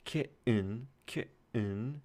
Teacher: in a word like kitten, kitten, you might have a glottal stop there. Some people say kitten, some people say kitten, and other people say kitten with the glottal stop.